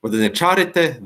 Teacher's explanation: all these words have stress on the third syllable from the end, what is called antepenultimate syllable.